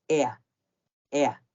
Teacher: la versión negativa del verbo auxiliar y modal suena diferente aquí suena casi como ea ea como una combinación un diptongo entre el sonido e y el sonido a del español